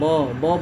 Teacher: ब बोलते हैं तो ओठ सट के फिर खुल जाते हैं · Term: स्पर्श व्यंजन